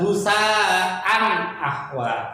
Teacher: Husaan ahwa harus dibaca jelas, tidak boleh dengung, tidak boleh samar-samar, apalagi berubah menjadi m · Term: idhar